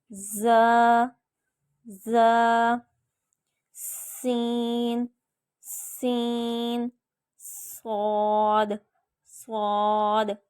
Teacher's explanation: یعنی ہم اب سامنے والے اوپر اور نیچے دونوں دانتوں کو آپس میں ملائیں گے اور پھر زبان کی نوک سے یہ تینوں الفاظ ادا کریں گے تو پڑھتے وقت ہماری زبان سے سیٹی کی سی آواز آئے گی